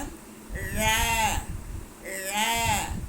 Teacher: அன்னம் நா நுனி வருட ழ வரும்